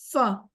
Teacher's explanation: فا بھی ہم اردو میں جس طرح ادا کرتے ہیں ویسے ہی ہے. ثنایا علیا یعنی سامنے والے اوپر کے دو دانتوں کا سرا نیچے والے ہونٹ کے اندرونی حصے سے لگے تو فا ادا ہوتا ہے. ہمارے دانت جب ہمارے ہونٹوں کے اندر لگتے ہیں تو فا کی آواز نکلتی ہے.